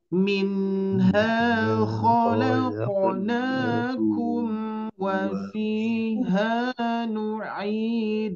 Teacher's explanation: Hati-hati nu, jangan sampai dibaca na ya.